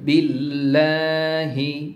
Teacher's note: এখানে যেহেতু জের এসেছে বা কাসরা এসেছে এখানে আল্লাহর নামের সেকেন্ড লামটাকে লা পড়তে হবে